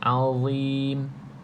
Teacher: iaitu hujung lidah kena pada gigi atas bahagian depan tu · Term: huruf dha